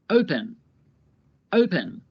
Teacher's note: The O is stressed. The last syllable, pen, is not stressed